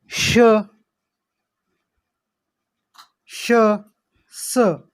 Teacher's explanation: उष्मे याला घर्षक असेही म्हणतात. मुखावाटे जोराने उसासा बाहेर टाकल्यानंतर या वर्णांचा उच्चार होतो. यात घर्षण आहे, उष्णता निर्माण होते. आणि हे श, श, स ही 3 उष्मे आहेत.